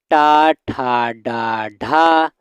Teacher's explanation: ये वर्ण कठोर तालु के माध्यम से बोले जाते हैं तथा जीभ की उल्टी हुई नोक से निचले भाग से स्पर्श होकर उच्चारित किए जाते हैं। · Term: मूर्धन्य